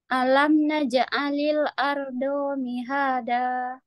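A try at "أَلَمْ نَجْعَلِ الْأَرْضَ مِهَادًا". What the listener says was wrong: Do-nya satu harokat nggak panjang.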